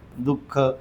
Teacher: विसर्गाचा उच्चार कसा होतो हला झटका दिल्यासारखा होतो